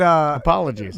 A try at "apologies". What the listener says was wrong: Slurring again. Slurred your apology. Put on your white voice. Apologies.